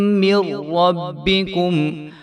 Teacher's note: ये जो मीम है ये रा के साथ आगे जाके मिल जाएगी, दरमियान वाला जो नून है वो साइलेंट हो जाएगा